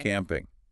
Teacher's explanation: Stress on the first part, camp.